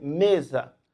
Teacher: Aqui nós temos 4 letras, 4 fonemas, mas eles não correspondem ao mesmo som. O S aqui, entre vogal, ele apresenta um som diferente, é um som de Z